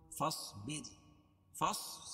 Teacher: صاد کو موٹا پڑھیں گے اور را کو باریک پڑھیں گے کیونکہ را ساکنہ سے پہلے با کے نیچے زیر ہے